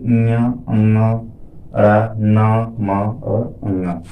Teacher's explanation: जैसे आप कहेंगे ञ, अंगा, रा, न, म और अंगा, तो हवा जो है मुंह से निकलती है और नाक से भी निकलती है, यानी दोनों जगहों से निकलती है। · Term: नासिक वर्ण